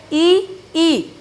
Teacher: ई जीभ मुड़ी तालु की तरफ को, ई तालु क्या होता है, ऊपर वाला पोर्शन होता है, ई। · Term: तालव्य